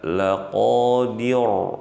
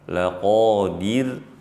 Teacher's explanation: waqaf dalam keadaan huruf ra di sini, ra-nya dibaca tipis. Jangan dibaca laqadir tebal.